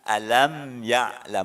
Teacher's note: Alam, mimnya mati, ketemu huruf ya. Ini mimnya berarti tidak didengungkan. Ini idhar safawi.